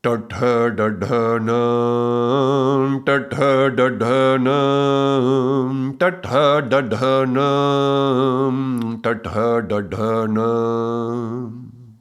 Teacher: So remember that we can do the T with the tongue forward or the T where the tongue goes up and touches the upper palate. So these are the sounds that are going to touch the upper palate. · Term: cerebral sounds